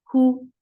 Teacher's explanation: For dhamma, circle your lips, and it should be from your throat.